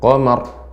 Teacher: Ra-nya ya ini tebal namun tidak langsung berhenti.